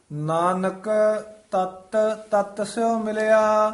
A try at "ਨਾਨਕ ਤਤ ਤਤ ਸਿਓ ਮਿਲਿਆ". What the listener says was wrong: ਜਿਹੜੀ ਹੈ ਇਕੱਠਾ ਨਹੀਂ ਬੋਲਣਾ। ਇਕੱਠਾ ਨਹੀਂ ਬੋਲਣਾ। ਤਤ ਤਤ ਨਹੀਂ ਕਹਿਣਾ। ਨਾਨਕ ਇੱਥੇ ਵੀ ਥੋੜਾ ਜਿਹਾ ਠਹਿਰਾ ਦੇ ਦੇਣਾ।